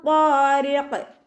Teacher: നല്ലോണം നാവിനെ മുകളിലേക്ക് ഉയർത്തിയിട്ട് വേണം തഫ്ഹീം ചെയ്തിട്ട് ഉച്ചരിക്കുക കേട്ടോ. വഖാരിഖ് ഖാഫ് ഇസ്തിഅലാൻ്റെ ലെറ്ററാണ്, കൽക്കലയുടെ ലെറ്ററും കൂടി ആയതുകൊണ്ട് നിർത്തുമ്പോൾ നമ്മൾ സുക്കൂന് കൊടുക്കുമ്പോൾ ഫുൾ സുക്കൂന് കൊടുക്കാൻ ശ്രദ്ധിക്കുക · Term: കൽക്കലയുടെ ലെറ്റർ